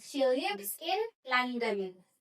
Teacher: Jadi nadanya itu turun ya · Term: intonasi turun